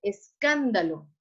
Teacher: O, por ejemplo, tenemos aquí una palabra que tiene 1, 2, 3, 4 sílabas y tenemos que, se dice escándalo. Entonces, donde suena más fuerte es la sílaba can, ¿sí? No es ni da ni lo, es escándalo. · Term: sílaba tónica